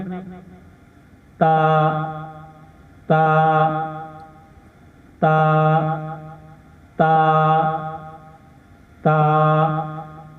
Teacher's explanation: ता को ता अदा करते वक्त हमारी जो जुबान है इसकी नोक सनाया ओलिया की जड़ से लगनी चाहिए।